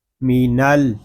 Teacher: نون کو ہم لام کے ساتھ ملا دیں گے۔